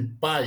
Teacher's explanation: ele vai do A, que é a vogal, para o I, pai, decrescente.